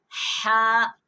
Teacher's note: حلق کے 3 حصے ہوتے ہیں، درمیان والے حصے سے ہا ادا ہوتا ہے